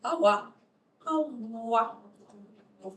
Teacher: Voiced, so vibrating vocal cords, labial velar approximate. So the lips are rounded and the tongue is kind of raised towards the velar, but not very much.